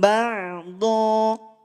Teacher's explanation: Ain di lafaz ba'da tetap dalam kondisi tipis. Ya, jangan dibaca tebal.